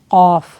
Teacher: قاف زبان کی جڑ کوے کے قریب نرم تالو سے لگے تو قاف ادا ہوتا ہے، یہ پر پڑھا جانے والا حرف ہے، ٹھیک ہے۔